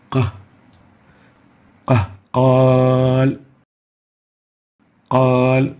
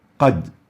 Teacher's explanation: So fatha followed by an alif has more Tafkheem than fatha without an alif. So fatha followed by dhamma, by sukoon, by kasra, and fatha with an alif is more than fatha without an alif.